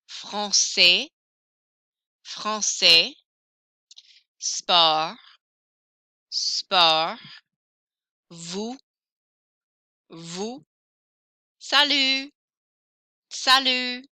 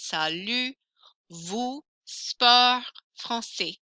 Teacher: So I don't hear those final consonants. I hear everything up until the final consonant.